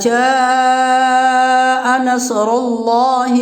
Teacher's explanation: حرف مد کے بعد حمزہ اسی کلمہ میں ہے، مد متصل ہوگا، اس مد کو 4 الف کے برابر کھینچ کر پڑھیں گے